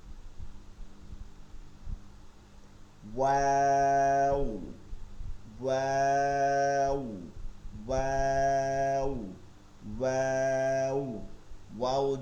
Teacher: ওয়াও 2 ঠোঁট গোল করে, 2 ঠোঁট গোল হয়ে যাবে